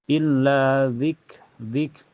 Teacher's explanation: kaf itu mempunyai sifat sidah dan hames ya jadi tertahan dulu lalu keluar ee nafas